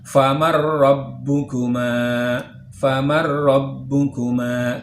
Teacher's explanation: Famar rabbukuma, tulisannya faman rabbukuma, namun karena dia idgham bila gunnah maka bunyi nun sukun kita masukkan ke dalam huruf ra menjadi famar rabbukuma